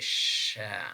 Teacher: This is voiceless, means that when we are producing this sound, we perceive less vibration, and then in terms of place of articulation, this is post-alveolar. In terms of manner of articulation, this is fricative, means that we release the air very slowly. We say sha, something like this.